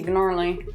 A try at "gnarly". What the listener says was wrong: It's gnarly. No, it's like gnocchi, the G is silent. Thank you, or like gnome. gnome.